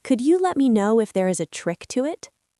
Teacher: a rising question intonation at the very end